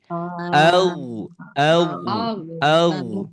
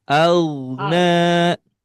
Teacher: Huruf ghin atau huruf ro memiliki makhraj dari tenggorokan bagian atas.